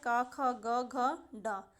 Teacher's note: इनका उच्चारण स्थान है कंठ, यानी कि ये गले से बोले जाते हैं